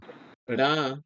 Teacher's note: ra is a soft rolling R sound